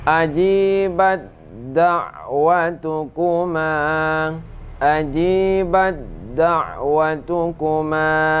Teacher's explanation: ta dimasukkan ke dalam dal